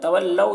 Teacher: तवल्लौ यहाँ पर वाव लीन है, वाव साकिन से पहले ज़बर है तो वाव लीन हुआ, वाव लीन को नर्म आवाज़ के साथ जल्द पढ़ना है